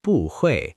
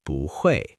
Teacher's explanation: when a fourth tone meets another fourth tone, the first one changes to a second tone, a rising tone, to make it easier to say